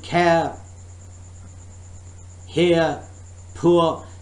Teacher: in the British English, remember, R sound is dropped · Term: dropping R sound